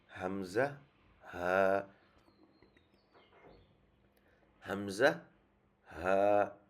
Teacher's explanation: হলকের শুরু থেকে হচ্ছে উচ্চারণ হয় হামজা, হা